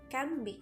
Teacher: We replace n sound with m for easier pronunciation